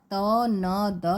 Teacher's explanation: त न द ये दंत्य है और इसमें जो है ट जो है वह दंत्य नहीं है